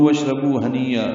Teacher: کاف لام باریک ہیں، لو واو مدہ ہے. واشربوا میں واو کو شین سے ملانا ہے، اور یہ بھی حمزہ عارضی ہے تو اس لیے واو کو شین سے ملا دیا گیا.